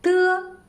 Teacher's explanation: tip next one tu tu is an unaspirated voiceless ivailor plosive when we pronounce it the tip of the tongue and upper alveolar ridge form a closure now air is compressed behind this closure then escapes